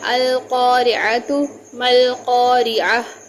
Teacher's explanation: یہاں عین کی آواز وسط حلق سے نکلے گی